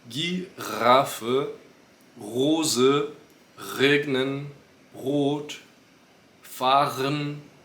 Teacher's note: tudo aqui com esse R mais da garganta parecido com gargarejo